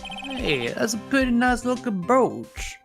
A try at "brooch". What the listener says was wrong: I knew you were going to pronounce it with the extra syllable.